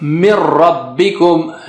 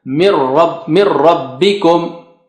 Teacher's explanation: there is no ghunna, nothing. Mir rabbikum, as if the nun sakina doesn't exist there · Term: merger